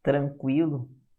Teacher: O I é vogal e o U é uma semivogal. E o ditongo ele é crescente. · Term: ditongo crescente